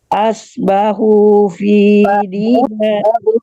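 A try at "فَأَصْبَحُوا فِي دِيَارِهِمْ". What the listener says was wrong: Bu, ketinggalan fa-nya. Jangan dari as, fa, as.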